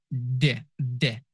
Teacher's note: Next sound the it is slightly different from the in English. D is um made by placing your tongue behind your teeth and your vocal cords vibrate.